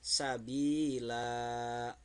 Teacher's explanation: tidak dibaca sabilan karena ini di akhir kalimat atau di akhir ayat, di akhir ayat, maka dibacanya dua harkat ya, sabila mad iwad karena ada fathah tanwin terletak pada waqaf atau berhenti.